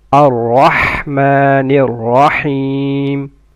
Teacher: را of رحمن and رحيم are full mouth. And ha comes from mid of the throat.